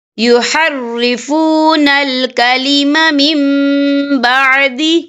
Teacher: یا دیکھیں میم، یہاں نون ساکن ہے، نون ساکن کے بعد جو ہے با آ رہا ہے، تو یہاں پر اقلاب ہوگا یعنی تبدیلی ہوگی، تو ہم یہاں میم کا تلفظ کریں گے اور ہم یہاں غنہ بھی کریں گے